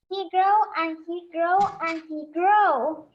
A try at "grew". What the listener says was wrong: Pay attention to the sound of the words, okay? He grew and he grew and he grew. No grow, grew, okay?